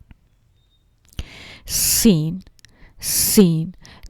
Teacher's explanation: इसकी नोक उन की तरफ होती है और जुबान की नोक से थोड़ा सा ऊपर वाला जो हिस्सा है वो आगे वहां से हवा जो है और दांतों के बीच में थोड़ा सा जो खला है इससे क्या होता है आवाज जो है वह सीटी की तरह थोड़ी सी जगह से निकलती है तो सीटी की सी तेज आवाज आती है